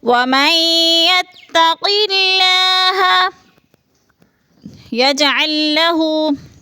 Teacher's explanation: یج میں قلقلہ ہے، جیم ساکن حروف قلقلہ میں سے ہے تو ہلا کر پڑھیں گے